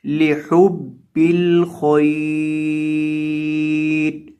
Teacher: آخر سے رو کو ساکن کر دیں گے جب اس کے اوپر ہم نے وقف کرنا ہے